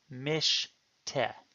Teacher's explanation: For instance, the Hebrew word mish te is a case where you have a short hirek on the mem, therefore a silent schwa closing the syllable